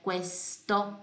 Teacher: Lembra que Q, U é cu, e eu pronuncio sempre o U, certo? Nunca ele vai desaparecer, então é questo.